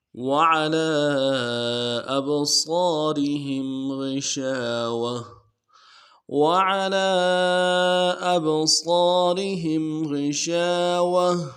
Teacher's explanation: اب یہاں پہ وعلی کھینچنا چاہیے، مد عارضی ہے لام کے اوپر، کھڑا زبر بھی ہے، مد عارضی ہے، کم سے کم 2 الف کی مقدار میں کھینچنا چاہیے